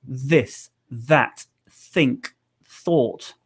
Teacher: The sound is made by your tongue touching the top teeth. Okay, so if you're not touching the top teeth with your tongue, you're not making the sound correctly, and it's probably not sounding correct.